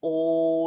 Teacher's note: you go from rounded lips to spread lips in the course of the speech we say oi very fast in Modern English and and if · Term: diphthongs